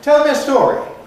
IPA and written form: ˈtel mjə ˈstɔːri (tell me a story)